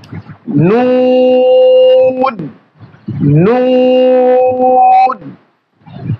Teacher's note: এই হরফের মাখরাজ হচ্ছে জিহ্বার আগা তার বরাবর উপরে তালুর সঙ্গে লাগে, জিহ্বার আগা তার বরাবর উপরে তালুর সঙ্গে লাগে।